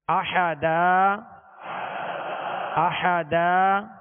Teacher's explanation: 2 زبر کی تنوین کو الف سے بدل کر وقف کریں گے